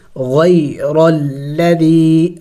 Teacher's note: تو یہاں پہ دیکھیں غی، یہ بھی حروف لین ہے، اس کو بھی جل پڑھیں گے۔ غیر الذی، را کے اوپر زبر ہے تو را کو موٹا کر کے پڑھیں گے